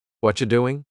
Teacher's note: What a what a it sounds like a ch sound here. Actually we've cut out completely the word are and the word you just becomes cha.